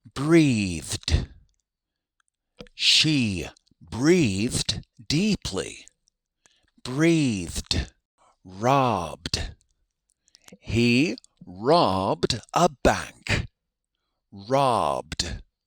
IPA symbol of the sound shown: d